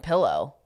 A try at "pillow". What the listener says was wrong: No, you're saying palo. You're hitting the A.